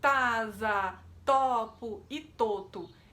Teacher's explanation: ao invés de elevar o dorso da língua, a criança está levantando a ponta da língua